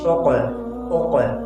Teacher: कौफ की मखरज में एक जंबिश हो रही है एक हरकत हो रही है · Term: कलकला